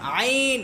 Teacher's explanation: আইনটা কণ্ঠনালীর অর্থাৎ গলার মাঝখান থেকে উচ্চারিত হয়। আইন, এটাও একটু চিপা।